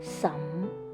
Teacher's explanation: tone number 2 is a raising tone from tone level 2 to number 5